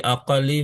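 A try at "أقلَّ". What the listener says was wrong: bukan aqalli, aqalla, tanda jernya fathah. kan tadi mamnu minas saraf, dia itu isim tafdil, gitu. Iya, mamnu minas saraf, gak boleh ditanwin.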